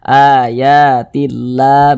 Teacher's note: Kalau sebelumnya ada huruf yang memiliki tanda baca kasrah, maka lafaz Allah dibaca tipis, dibaca tarkik